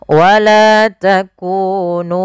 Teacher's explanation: mim mati bertemu dengan wau yaitu izhar syafawi yang di mana harus dibaca dengan jelas suara mimnya dan tidak boleh ditahan